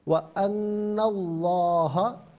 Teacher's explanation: لفظ اللہ کی لام کو یہاں بھی پر کر کے پڑھا جائے گا اس لیے کہ ما قبل حرف نون پر زبر ہے